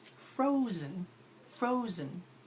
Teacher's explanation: the fro is the stressed part of the word or it's the non lazy part